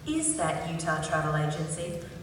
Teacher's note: The stress in the reference is on the first word.